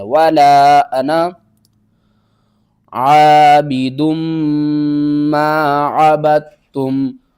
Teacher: انا کے بعد نون کے بعد جو الف ہے نا اس کو آپ نے چھوڑ دینا ہے